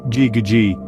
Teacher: notice how the back of your tongue Rises and there's a slight vibration in your throat · of the roof of your mouth just behind the hard part the G sound is voiced which means your vocal cord should vibrate as you produce the sound you can feel this by placing your hand on your throat · G sound to make this sound the back of your tongue should rise to meet the Vellum that's the soft part of the roof of your mouth just behind the hard part the G sound is voiced which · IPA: /g/